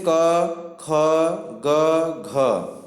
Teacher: जो क वर्ग है इसका उच्चारण स्थान कहाँ से होता है, तो यह कंठ से होता है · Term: कंठ व्यंजन